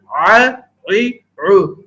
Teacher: عین ہا حلق کے درمیانی حصے سے ادا ہوتے ہیں